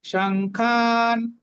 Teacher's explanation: নিচ্ছি সং বাকি হচ্ছে খা তারপরে নটা হচ্ছে অর্ধেক তাহলে সংখান আকার আছে এজন্য খাকে টানছি দীর্ঘ করছি